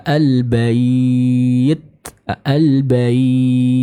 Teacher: akan ada sedikit udara ataupun nafas yang dialirkan dari mulut kita ketika kita mengucapkan huruf Ta ini Khususnya ketika huruf Ta ini sukun atau Bertasbih Hai Namun kita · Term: sifat hamsya